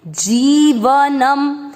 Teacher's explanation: ज पर बड़ी ई की मात्रा लंबा खींचेंगे, जीवनम, व और न पूरे अक्षर दोनों में अमिक्स किया, जीवन, न पर अनुस्वार आधा म, जीवनम।